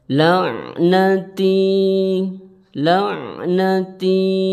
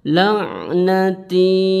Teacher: Jadi jangan terlalu panjang ketika mengucapkan yaitu cukup satu Alif atau dua harakat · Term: Mad Thobi'i